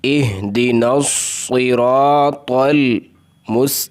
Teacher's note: صاد حروف مستعلیہ میں سے ہے، یہاں پر اس کو مکمل اس کی تفخیم یعنی اس کو موٹا کرنا ہے